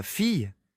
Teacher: Ce double L qu'on chuchote en Y, c'est pas évident.